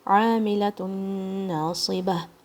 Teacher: عین کی آواز حلق کے درمیان سے آئے گی. ووکل کارڈ کو اپنے سکویز کرنا ہے اپنی، اور عین کی ساؤنڈ اپنے تھوڑی سی ایفرٹ کے ساتھ مگر تکلیف کے ساتھ نہیں.